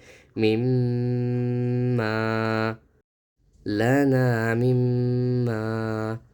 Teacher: ما، یہاں میم پر تجدید ہے، سختی کے ساتھ پڑھے، اور میم کے بعد میم آ رہا ہے، یعنی کہ یہاں غنہ کرنا چاہیے